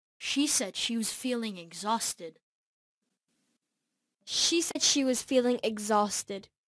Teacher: ngữ điệu sẽ đi lên đối với động từ tường thuật và sẽ đi xuống cuối câu